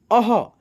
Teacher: आधा 'हा', ठीक है? हम इसका उच्चारण थोड़ा खींचकर करते हैं, आधा ' हा' की तरह।